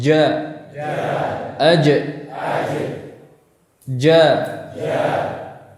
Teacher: Perhatikan pertemuan antara tengah lidah dan langit-langit yang rapat. Perhatikan ini pertemuan yang rapat ya. Tidak ada celah sama sekali. Yang ini menghalangi udara untuk keluar dari mulut. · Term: huruf jim